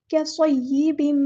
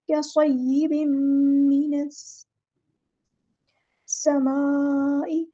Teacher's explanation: तन्वीन मीम को मीम में मिक्स कर देंगे हम यहाँ पर इदगाम माअल गुन्ना हो रहा है। कैसॉय्यिबिन मिनस समाई, हम नून को सीन के साथ मिला देंगे, हमज़ुल वस्ल हमारा ड्रॉप हो जाएगा।